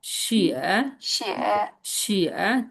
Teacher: 3 নম্বর tone নিচে নেমে উপরে যাবে